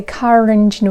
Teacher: Americans will say car engine with linking R